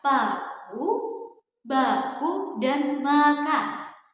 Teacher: dihasilkan melalui pertemuan antara dua bibir, yaitu bibir bawah atau labium inferius yang merupakan artikulator aktif bertemu dengan bibir atas atau labium suferius yang merupakan artikulator fasif atau sebagai titik artikulasi. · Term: bunyi biabial